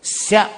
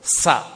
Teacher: ఒకటి తాళవ్యం, ఒకటి దంత్యం. స సీతలో ఉన్న స దంత్యం, దంతములతో పలుకుతాం.